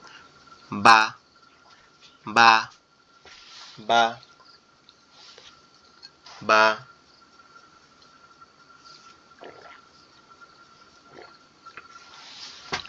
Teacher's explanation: এরপরে বা। বা হরফটি আমাদের দুই ঠোঁট একসাথে লেগে যাবে, লেগে যখন পৃথক হয়ে যাবে তখন আওয়াজটা বের হবে